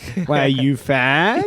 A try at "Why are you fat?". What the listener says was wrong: Raise the tone so it's a question, not an exclamation.